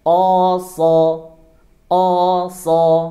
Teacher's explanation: Huruf sha makhrajnya ada di ujung lidah, ada di gigi seri bawah. So, kemudian pangkal lidahnya dinaikkan.